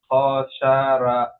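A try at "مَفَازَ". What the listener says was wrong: Saya seperti S biasa. Khosaro.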